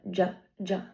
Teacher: Um it is a a fricative which means there's a stop and then a fricative of um airflow. So j there's first a stop and then a fricative and it is a voice sound because my vocords are vibrating.